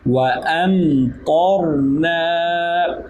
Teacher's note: میم پر جزم ہے اس لیے یہاں پر کسی قسم کا قلقلہ نہیں ہوگا، سکون ہوگا